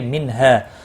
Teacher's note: اظہار ہلکی ہوگا، گنہ نہیں ہوگا